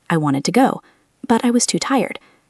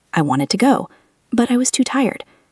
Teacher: Listen to the intonation as well. When I say I wanted to go, my voice goes up a little bit. It shows that the sentence is not finished.